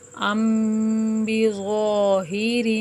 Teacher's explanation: ام بظاہر، میم ساکن کے بعد با آیا ہے تو یہاں پر کیا ہوگا؟ غنہ، ایک الف کے برابر رک کر کریں گے۔